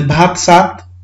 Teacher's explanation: भ ध्वनि चाहिँ स मा रूपान्तरण भयो, ध्वन्यात्मक परिवर्तन भयो